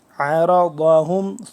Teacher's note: عرضہم عین کو حلق سے صحیح کر کے نکالیں گے، را کو موٹا پڑھیں گے، ضاد کو بھی موٹا پڑھیں گے